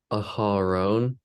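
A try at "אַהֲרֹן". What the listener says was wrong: Aharon, excellent. Very good.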